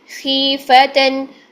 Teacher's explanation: تو دیکھتے ہیں ابھی خیفتن، خی خوا کسرہ کے ساتھ جب ہوتا ہے تو خوا کی تفخیم ختم ہو جاتی ہے